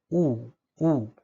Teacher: जिभेचा मागचा भाग आपल्या टाळी दिशेने वर उचलला असतो, तो थोडाफार स्पर्शही होतो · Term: पश्च स्वर